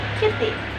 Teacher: For example, flapping is the phonological process of weakening whereby the voiceless alveolar stop consonant phoneme t is pronounced as a voiced alveolar flap, like in the word kitty.